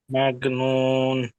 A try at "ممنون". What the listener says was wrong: মাগনুন নয়, আর ইয়ে পড়বেন না, দেখেন বানান করলে বুঝতে পারেন, মিম মিম জাবার কি হয়, মাম মাম, মিম মিম জাবার